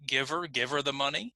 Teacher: we cut the H in these words to make them faster to pronounce. Now, when I cut the H, if you notice, the next sound is a vowel. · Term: elision